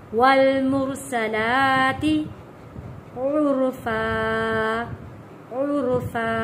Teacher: را کو موٹا پڑھیں گے، پر پڑھیں گے، آواز کو بھاری کر کے پڑھیں گے۔ والمرسلات عرفا، 2 زبر کو وقف کریں گے تو وہ 1 زبر میں پڑھا جائے گا۔